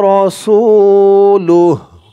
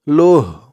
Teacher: থামার কারণে উচ্চারণ হবে লুহ।